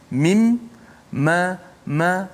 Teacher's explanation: Mim walaupun kita sebut kat bibir, tapi kita tak boleh sebut mim tanpa melalui suara mim kat hidung. Mim, ma, kalau kita tutup hidung tak akan keluar suara huruf mim kalau kita sebut mim.